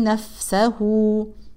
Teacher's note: والفاء طبعا نبين فيها الهمس